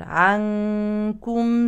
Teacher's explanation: اما هذه النون الساكنه تخفى لان الحرف التالي كاف